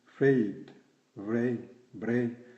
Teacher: Le EI, ei, par convention, Association de deux voyelles pour donner un son entre le E fermé et le I